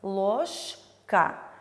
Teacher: Далее в слове «ложка» звонкое парное «ж» находится перед глухой парной «к». И у нас К оглушает букву Ж, поэтому в слове ложка Ж произносится как Ш. Ложка. Ж у нас изменяется на парную Ш. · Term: оглушением